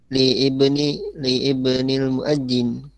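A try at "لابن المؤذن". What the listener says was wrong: Akan tapi ini ibnul ini dia hamzah wasal alifnya. Ketika dia di tengah berarti libnil muadzini.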